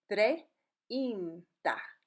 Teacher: When you say it normally, it will blend. But you still hear the two vowel sounds when slowed down, like the English word train, treinta.